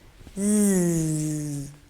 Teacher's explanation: Tongue tip and the alveolar ridge. Z is voiced.